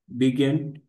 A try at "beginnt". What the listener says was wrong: बे, ई असतो बेगिंट.